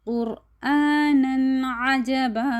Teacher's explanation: پھر جو ہے تنوین وہ الف مدہ میں کنورٹ ہو جاتی ہے